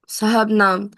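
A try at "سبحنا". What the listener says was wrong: ठीक है, साहबना आप करिए, साहबना, हा पहले और बा बाद में। बा पहले, हा बाद में, सबहना। सबहना।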